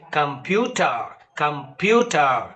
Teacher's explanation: Pew is stressed and come is unstressed